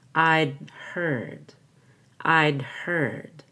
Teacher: I'm going to hold my breath and make a stop on the D